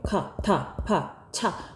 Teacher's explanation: 침이 많이 튀기게 나가는 소리, 거센 소리라고 해요.